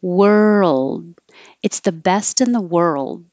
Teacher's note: you don't release the D if you if you have it at the end of the sentence you just hold it in the D position world it's the best in the world holding it there you